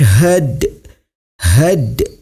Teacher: Qolqolah Sugro cara membacanya huruf Dal nya sedikit dipantulkan